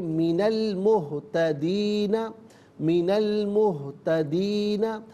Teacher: یہاں پر ناظرین نون پر زبر ہے سے المہتدین کے لام کے ساتھ ملائیں گے، درمیان سے حمزہ یعنی الف کو حذف کیا جائے گا